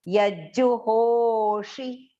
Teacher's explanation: So here yajju, double j and a small u vowel sound.